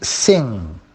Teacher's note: voiceless it is an alveolar and that's the place of articulation the tip of the tongue catches the alveolar ridge it is central at the center it is also oral not